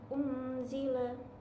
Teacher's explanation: Selanjutnya ada ikhfa karena ada nun sukun bertemu huruf dal. Di situ ada ikhfa, nun sukun bertemu dengan dal. Unzila sedikit ada dengungnya